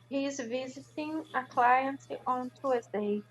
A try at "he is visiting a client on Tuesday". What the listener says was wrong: On Tuesday. Great.